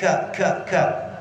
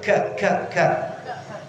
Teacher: ka itu adalah keluarnya dari pangkal lidah, Bu. Pangkal lidah itu yang dekat lak-lakan sini, turun sedikit.